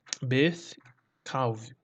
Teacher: o Yud, né, do pronome possessivo da primeira pessoa do singular não é pronunciado